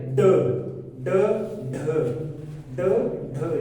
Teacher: जीभ की नोक मूर्धा को टच करे, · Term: उत्क्षिप्त व्यंजन